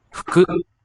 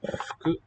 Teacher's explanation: both of the U sounds there will be voiceless.